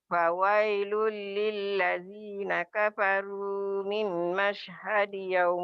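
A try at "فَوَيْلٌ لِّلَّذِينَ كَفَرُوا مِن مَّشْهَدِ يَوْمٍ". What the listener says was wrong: mimnya agak rapat ya Makcik. Idgham bigunanya. Fawailul ini idgham bila gunnah.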